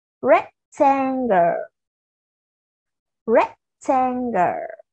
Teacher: âm đầu tiên đó là âm rect của chúng ta sẽ cao hơn một chút xíu, to hơn một chút xíu so với các âm còn lại nhé